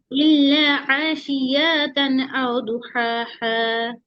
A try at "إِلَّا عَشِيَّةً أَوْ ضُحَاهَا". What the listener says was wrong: আশিয়া ইয়াতে টান হবে না ইল্লা আশিয়াতান আও দুহাহা